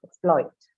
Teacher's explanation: there are only two syllables here. Ex and ploit. So the stress is on the second syllable because this is a verb.